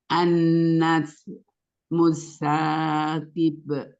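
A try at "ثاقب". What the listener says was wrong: An-najmus saqib. Qafnya ya, sepertinya qafnya memang belum keluar. Coba qi. An-najmus saqib.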